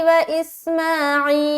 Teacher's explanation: जब यहाँ पर हम स्टॉप करेंगे तो हम लाम का जो पेश है वो हटा देंगे और यहाँ पर हम जज्म लाएंगे, यानी कि सुकून लाएंगे, ठीक है।